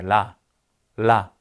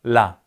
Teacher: 치조에서 굉장히 빠르게 튕겨서 아래로 내려가죠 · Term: 치경 탄설음